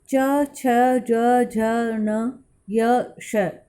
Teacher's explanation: तालव्य या तालु से निकलने वाले व्यंजन हैं